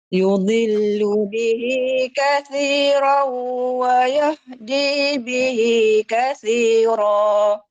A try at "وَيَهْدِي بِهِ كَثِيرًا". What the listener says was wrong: Wayah, cuba sebut wayah. Jangan wayah. Yang belakang tu tadi dia pergi ke tengah tekak, tengah tekak. Kita nak wayah gitu saja. Dia pangkal tekak